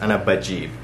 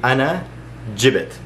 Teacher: But the past tense of I brought, so the long vowel goes out, you're gonna turn it into a short vowel, and that short vowel is going to be kasra, because it's ya in the present tense, ana bajib.